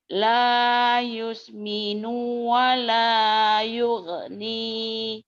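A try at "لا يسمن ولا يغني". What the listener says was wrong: Nunya pendek. La yusminu wa la yughni.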